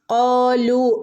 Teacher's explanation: കാലു വാവ് മദ് ഉണ്ട് രണ്ട് ഹറക്കത്ത് നീട്ടി ഓതണം ട്ടോ · ഇവിടെ അലിഫിൻ്റെ മുകളിൽ സുക്കൂന് വന്നാൽ നമ്മൾ ഇവിടെ പ്രത്യേകിച്ചൊരു ശബ്ദം കൊടുക്കുന്നില്ല. അപ്പോൾ നമ്മൾ അതിനൊരു ഉച്ചാരണം ഇല്ല കേട്ടോ.